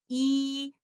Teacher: it comes with the vibration of the vocal cord plus the retraction of the lower jaw